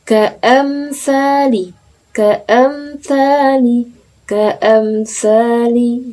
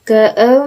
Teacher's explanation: Mimnya harus jelas tanpa dengung. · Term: idhar syafawi